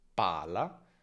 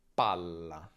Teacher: Come vedi, la vocale prima si accorcia. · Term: doppia